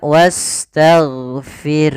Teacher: Huruf ghainnya hati-hati jangan sampai memantul. Kesalahan yang terjadi memantulkan huruf ghain, misalnya wastaghfir, wastaghfir.